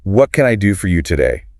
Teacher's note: With that downward inflection at the end because it's a what question